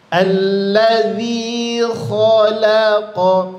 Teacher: kha tebal, lam tipis, qaf tebal lagi. Maka hati-hati di sini huruf lamnya di antara dua huruf tebal.